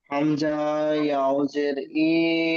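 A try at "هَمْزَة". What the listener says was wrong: আচ্ছা, এখানে একটু দেখেন, হামজা বলে টান দিয়েছেন, হামজা, হামজা আর আলিফ, আলিফ থেকে ইয়া পর্যন্ত পড়েছিলেন দুইটি অক্ষর, একটু টান হয় না। তাহলে এখানে হামজা, হামজা বলে টান হবে না, হামজা ইয়াজের ই, ঠিক এমন।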